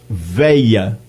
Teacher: há também a pronúncia de veia, em vez de velha, sem o LH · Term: ieísmo